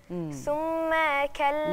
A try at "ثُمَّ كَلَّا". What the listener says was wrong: لا ثم. طيب انا عملت ميم الف، دي ميم بس.